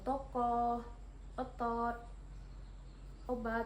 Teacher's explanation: vokal o madia bawah belakang dengan posisi mulut semi terbuka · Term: vokal O madiyah bawah belakang